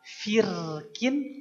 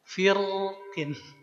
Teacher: Rnya boleh tipis, boleh tebal.